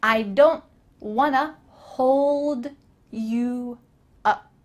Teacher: Want to is linked together and makes wanna.